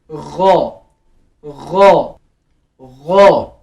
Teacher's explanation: यहाँ से गले के पहले हिस्से से अदा होगा, लाइक ख, ख, जहाँ से ख अदा होता है वहीं से गैन अदा होगा, गैन, गैन, ठीक। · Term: ghain